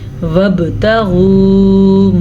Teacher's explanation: باشروہن وابتغوا ما، وابتغوا، با پہ کلکلا ہو رہا ہے کیونکہ با پہ ساکن ہے